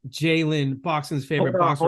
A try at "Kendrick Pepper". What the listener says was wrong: You did not say his name right. You got you got Peppa. You gotta say it like that. It gotta get raspy. So it should already be raspy.